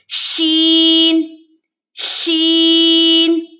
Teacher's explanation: شین میں تفشی کی صفت ہوتی ہے، یعنی کہ آواز پھیلتی ہے